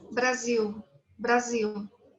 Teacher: Se transforma en Z, la S, y la L en U.